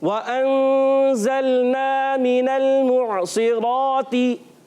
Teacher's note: वाव की अदायगी होठों की गोलाई से होगी और हमजा खूब वाज़े करके अदा करेंगे